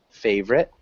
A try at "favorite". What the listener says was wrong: just try those two syllables. So I know you're pronouncing that O